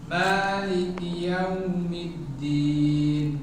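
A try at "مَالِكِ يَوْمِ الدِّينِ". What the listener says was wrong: Kafnya kurang syidahkan.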